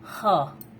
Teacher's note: तो हमें अधिकतर प्रश्न पूछा जाता है कि ह सघोष व्यंजन है कि अघोष व्यंजन है, तो हमें याद रखना है कि ह जो है वो सघोष व्यंजन है